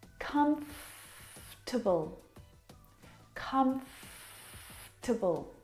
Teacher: this word just like vegetable has an extra vowel in there that we don't need to pronounce